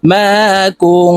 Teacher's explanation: নুন সাকিনের পরে ইকফার হরফ তা আসছে তাই এই নুনকে নাকের ভিতরে লুকাইয়া গুন্নার সহিত পড়ব